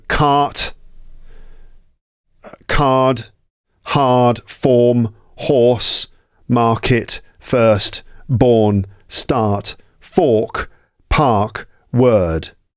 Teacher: So the R sounds are not pronounced there because they're all followed by consonants. Cart is pronounced followed by a T sound.